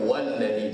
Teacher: Dah ada waw di depan dah cukuplah. Hamzah wasat tu tak berfungsi lagi. Kita baca walladhi terus. Jangan bunyi wa'alladhi.